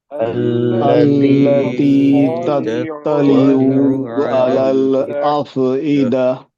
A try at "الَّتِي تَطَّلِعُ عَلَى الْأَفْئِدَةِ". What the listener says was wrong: तत्तलिऊ नहीं बोलिए खींचना नहीं है इसको जल्दी जल्दी पढ़ो التي تطلع على الأفئدة ना तत्तलिऊ नहीं تطلع على تطلع على